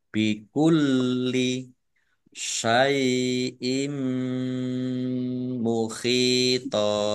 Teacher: Kasroh tanwin bertemu dengan huruf mim, bacaan idgham bi gunnah, masuk dengan mendengung, yaitu mendengung mim, ditandai mimnya ada tasdidnya, mim tasdid dibaca gunnah atau mendengung, ditahan kira-kira dua harokat biar tampak dengungannya.